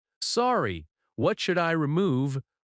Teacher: Rises at the end because it is a question.